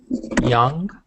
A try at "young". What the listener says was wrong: So you said jong. You said it like a J. So just be careful.